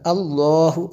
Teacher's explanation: لفظ اللہ کو جو پر پڑا گیا اس سے پہلے زبر ہے اس لیے پر پڑا گیا